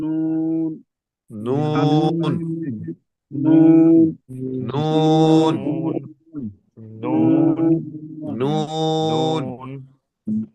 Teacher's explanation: हाँ हाँ, इसके अंदर भी यानी कि जुबान का ये ना, आगे जो जो जुबान की नोक है उसका किनारा और दांतों के मसूड़ों से नून निकलता है।